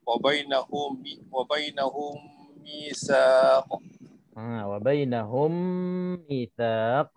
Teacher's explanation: Apabila mim mati bertemu dengan mim, harus berdengung dengan 2 harakat, seperti wa bainahum mitsaq. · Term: Idgham islain sagir